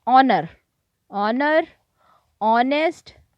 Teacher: in these words H is silent, so we pronounce them like honor, honest.